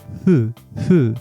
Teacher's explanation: at the end finally we have the F sound which is basically just an F sound but without touching your teeth with your lips in between a h and a f sound